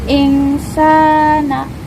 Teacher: Cara bacanya, lam dibaca jelas. Kedua, ikhfa karena hukum nun sukun bertemu sin. Cara bacanya dengan dengung dan ditahan 3 harokat. · mad tabi'i karena huruf sin berharokat fathah bertemu alif. Cara bacanya dipanjangkan 2 harokat.